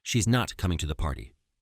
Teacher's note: the party the stressed words are not coming and party and the intonation pattern is fall rise implying surprise or disappointment